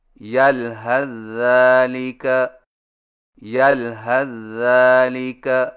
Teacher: سا کو ذال میں داخل کر کے ایک مشدد ذال سے پڑھیں